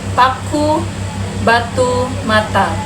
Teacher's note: Yang pertama, tempat artikulasi konsonan dalam bahasa Indonesia: bilabial, dua bibir, P, B, M